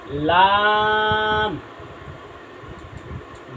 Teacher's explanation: তারপরে আমরা আসি লাম, লাম, লাম হচ্ছে নয় আট নম্বর মাখরাজ, আট নম্বর মাখরাজ জিব্বার আগার কিনারা সামনের উপরে দাঁতের মারির সঙ্গে লাগাইয়া উচ্চারণ হবে লাম